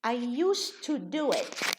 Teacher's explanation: We reduce the D, we make it voiceless. We make it a T because the T and the D are sisters.